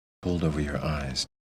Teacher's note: stressing pulled and eyes